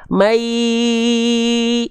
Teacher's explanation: May ini enggak masuk hidung. Enggak ada sengaunya dia.